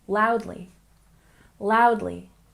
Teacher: We stress the first syllable.